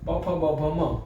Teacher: એ પૂરેપૂરા હોઠ આપણા જોઈન્ટ થાય છે, એટલે આને કહેવાય સ્પર્શ વર્ણો.